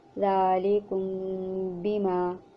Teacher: میم ساکن کو ادا کرتے وقت دونوں ہونٹوں کے خشکی والے حصے کو بڑی نرمی سے ملا کر خیشوم سے ایک الف کے برابر غنہ کے ساتھ ادا کیا جائے، پھر دونوں ہونٹوں کے کھلنے سے پہلے ہی تری والے حصے کو سختی سے ملا کر با کو ادا کیا جائے۔ · میم ساکن کے بعد اگر با متحرک آ جائے تو میم ساکن کو اخفاء اور غنہ کے ساتھ پڑھیں گے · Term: اخفاء شفوی